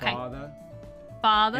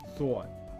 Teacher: about New York speakers we get a big difference between these there tends to be a little bit of rounding that happens on this father father and a lot of rounding that happens on this thought